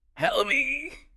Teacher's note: And help me. That often links really closely. It almost sounds like one unit. Help me. The vowel in me is very short and unstressed.